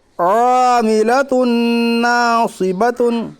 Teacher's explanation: नून के ऊपर तजदीद है, तजदीद वाला हरफ को मुशद्दद कहते हैं। नून मुशद्दद के पढ़ने में एक अलिफ के बराबर गुन्ना होगा।